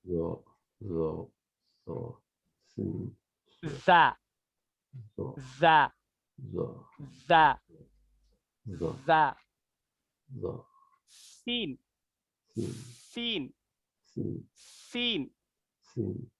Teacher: ऊपर के दांत नीचे के दांत आपस में टकरा रहे हैं, आपस में मिल रहे हैं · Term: हुर्फ सफरिया